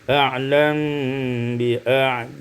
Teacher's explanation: disukunkan mim dengan ikhfa syafawi